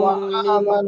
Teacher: যদি আপনি হামজা বলছেন তো মনে রাখবেন ওটা হামজা, ঠিক আছে? আইন হবে না, উচ্চারণটা হামজার মতন রাখবেন।